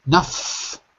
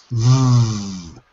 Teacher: I don't use my throat. We call that voiceless.